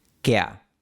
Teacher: En este diptongo, la A es la parte larga y la E es más corta, kea. Por eso le ponemos ese símbolo de breve a la E para indicar que es más corta. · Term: diptongo ea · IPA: [ke̯a]